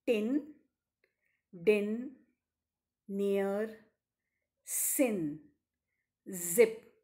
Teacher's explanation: the initial sounds in tin then near sin zip are alveolar sounds